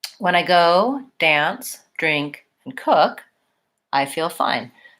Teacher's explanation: when I go 3 2 3 2 when I go dance I do a little rise on each one but I don't follow all the way off until I get to my last pattern